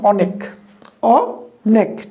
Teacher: এইবার অ ধ্বনির বিবৃত উচ্চারণ দিয়েছে